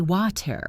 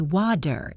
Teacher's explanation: This happens when a T is between two vowel sounds. In American English, this T does not sound like a T at all. It sounds like a very quick, soft D. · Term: flap T